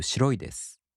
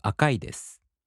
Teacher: In the polite form, the accent falls on the mora before い. For example, しろい turns into しろいです.